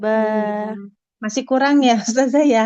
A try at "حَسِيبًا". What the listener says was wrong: hati-hati untuk huruf H-nya, Yang di tengah tenggorokan. Ha, ha.